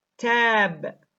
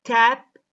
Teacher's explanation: The a vowel in the word tab is pronounced with more length than the vowel in the word tap, i.e., it is longer.